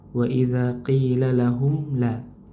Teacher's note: Mim sukun ketika bertemu dengan huruf lam maka mimnya dibaca jelas ya. Izhar syafawi.